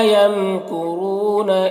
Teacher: یمکرون را کو پر پڑھیں گے، واو مدہ ہے، ایک الف کے برابر کھینچیں گے